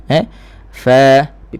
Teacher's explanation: hams sifat angin terlepas pada fa, biar ada dengar. Jangan tenggelam macam sad juga.